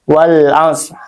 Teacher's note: alif lam qamariah sehingga dibaca jelas lamnya · ee karena alif lam bertemu dengan huruf qamariah yaitu ain. Jadi dibacanya jelas ya izhar wal as lamnya terdengar · Wal 'asr, lamnya terdengar jelas. Jadi tidak dipantulkan ataupun ditahan. Tidak dibaca wal 'ashr, wal 'asr ya.